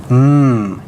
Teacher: by labial nasal is gonna be your m mmm so again there's no air coming up the mouth when you make an mmm an M sound but it is coming out your nose